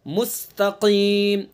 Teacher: काफ को जबान की जड़ और उसके मुकाबिल ऊपर का तालु